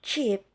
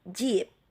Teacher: Affricate. If you combine a brief stopping of the airstream with an obstructed release which causes some friction, you will be able to produce the sounds ch and j.